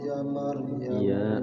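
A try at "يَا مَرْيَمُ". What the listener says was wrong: Ya-nya panjang.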